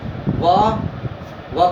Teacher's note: व का उच्चारण स्थान क्या होगा, दंतोष्ठ